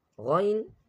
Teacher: Ghain is pronounced from the upper throat with a heavy sound, which is near to the mouth. Upper throat means which is near to the mouth.